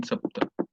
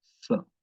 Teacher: So here in pronouncing this sapta, sa, so the tongue goes toward the teeth, sapta, partially touches the teeth, sapta, not completely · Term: sa sound